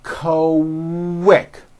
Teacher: the word quick is pronounced with a K and a strong W sound